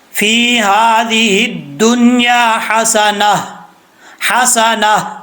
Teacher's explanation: وقف کرتے ہوئے اس گول تا کو ہا سے بدل دیں گے، اور اگر ملا کے پڑھیں گے تو وہ تا پڑھا جائے گا، ہا نہیں پڑھیں گے۔